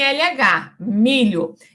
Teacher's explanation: Finalmente, então, o grupo LI, semivogal, palatiza-se em LH